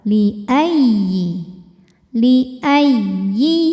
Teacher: didahului tanwin atau nun sukun ini bukan idgham Bacanya jangan ditahan ini cukup dibaca dengan nabr menaikkan intonasi suara